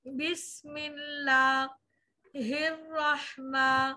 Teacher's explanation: हिर पहली रॉ बारीक, रह दूसरी रॉ मोटी